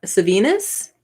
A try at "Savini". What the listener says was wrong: oh savini there's an s at the end maybe the s is silent